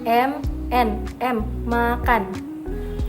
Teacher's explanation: Nah, yang ketujuh terakhir bunyi nasal atau bunyi hidung, yaitu bunyi yang dihasilkan dengan cara arus udara lewat tenggorokan mulut ditutup rapat, tetapi arus udara dialirkan lewat rongga hidung